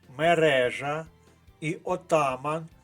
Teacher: обидва слова мають наголос на другому складі